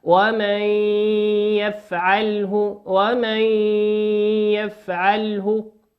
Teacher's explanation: النون في كلمة ومن هي نون ساكنة أتى بعدها حرف الياء، والياء من حروف الإضغام بغنة، تغن بمقدار حركتين